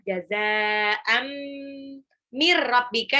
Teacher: Tanwin ketemu mim itu idgham bil gunah, langsung lebur tapi ditahan.